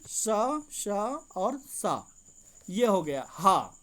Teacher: ऊष्म व्यंजन में जो 3 प्रकार के सा हैं और हा, ये हो जाता है ऊष्म, जिसमें घर्षण के द्वारा गर्मी पैदा होती है